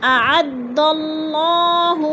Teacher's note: اعد اللہ، اللہ پر پڑھا جائے گا اس لیے کہ اللہ سے پہلے لفظ دال کے اوپر زبر ہے تو اللہ کو پر کر کے پڑھیں گے